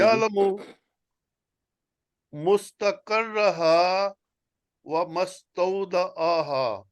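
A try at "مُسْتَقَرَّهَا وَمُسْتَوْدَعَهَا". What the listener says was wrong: मीम के ऊपर पेश है जी।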